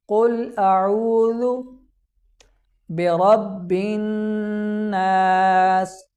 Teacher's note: لفظ برب یہاں پر را کو موٹا پڑھا جائے گا کیونکہ را پر جب زبر آتی ہے تو را کو موٹا پڑھا جاتا ہے، تو یہاں پر را کو پر پڑھا جائے گا۔